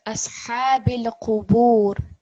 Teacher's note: Try to make the ha a bit more from your throat.